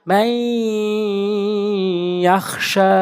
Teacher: শিন খারা জবর শা, এটা কিন্তু মদের হরকত, এটা আমরা এক আলিফ টেনে পড়বো।